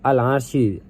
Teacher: dibaca alif lam qamariyah karena lam dibaca jelas karena bertemu huruf qamariyah yaitu ain